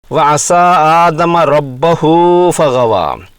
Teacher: لفظ ربہ کی با پر زبر پڑی جائے گی، پیش پڑھنا غلط ہوگا